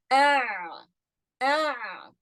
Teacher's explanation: ayn comes from the middle of the throat. And that's the epiglottis, just so that you know.